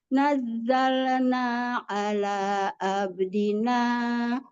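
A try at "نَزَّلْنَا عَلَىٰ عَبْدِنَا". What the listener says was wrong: Nanya jangan panjang-panjang. Nazzal ada zai tasdid, nazzalna ala abdina di situ.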